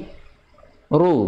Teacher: Ru monyong, tapi posisi lidahnya sama seperti huruf ra